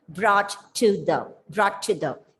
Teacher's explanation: in the conservative rp the letter t is articulated or pronounced very clearly even if the words are brought together